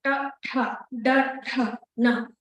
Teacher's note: Murdhanya are called cerebrals, where the tip of your tongue is touching the top of the roof of the palate.